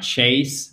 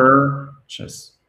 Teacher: bien prononcer cette voyelle, c'est un E non accentué, c'est pas un chase, mais chess, ok? Chess.